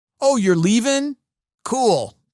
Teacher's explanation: Every sentence ends flat, too. No upswing.